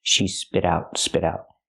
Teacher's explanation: the T changes to a fast D because it's between vowels